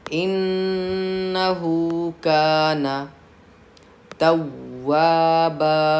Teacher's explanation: तव्वाबा में वाऊ पे तशदीद है, 2 हर्फ की ताख़ीर के बराबर आपको सख्ती करनी है।